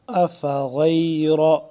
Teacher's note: غین کو موٹا کر کے پڑھیں گے